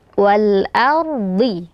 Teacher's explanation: huruf dad ini huruf yang sangat tebal, ya, berkumpul padanya sifat isti'la dan itbaq. Jadi walaupun dia berharokat kasroh, tetap harus dibaca tebal walaupun agak sedikit berkurang ketebalannya.